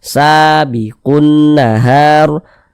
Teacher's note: maka alif lam bertemu dengan huruf nun huruf nun huruf Syamsiyah maka hukumnya alif lam syamsiyah eah maka huruf lamnya dibaca idgham